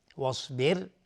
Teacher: صاد از حروف استعلاز غلیظ تلفظ میشه. واصبر، را ساکن قبلش کسره اومده، حکمش ترقیق است، حکمش نازک تلفظ میشه.